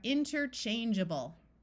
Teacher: this a will take on a short U or a short I sound